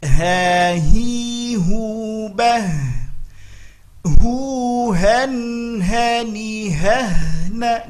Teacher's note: Hati-hati, biasanya terlalu kuat pada huruf ha hi hu. Nah, dia sifatnya khafa, lembut saja. Ha hi hu bah hu han hani hahna, ngalir, sifat hamas.